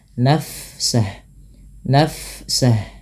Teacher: Fa bila sukun dialirkan bunyi nafasnya